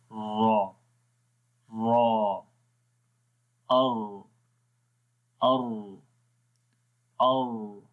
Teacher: را جب پڑھیں گے تو اس میں صرف زبان کی جو نوک ہے اس کے اندر ہلکی سی کپاہٹ پیدا ہوتی ہے، ٹھیک ہے۔ یہاں جو را کا مخرج ہے تو وہاں پر تھوڑی سی کپاہٹ پیدا ہوگی، جیسے پڑھیں گے او آخر میں جو ہے یہ کپاہٹ سی جو ہے آواز آتی ہے۔ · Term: تکرار